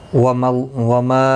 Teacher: ما الف مدہ ہے، ایک الف کی مقدار کے برابر کھینچ کر پڑھیں گے